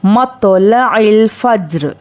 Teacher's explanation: रॉ साकिना से पहले ज़बर, रॉ पुर होगी। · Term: रॉ को पुर